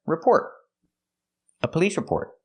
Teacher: the T at the end of report is a stop T don't say report stop the air report a police report altogether